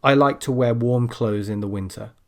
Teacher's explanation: a lot of native speakers, when they're speaking quickly, they will, without realizing it, drop the th sound. · There, I dropped the th and you probably didn't even notice.